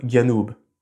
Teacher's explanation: Dans certaines parties du Yémen et d'Oman, on fait une sorte de mix entre g et j, donc ça donne à peu près quelque chose comme Ganoub.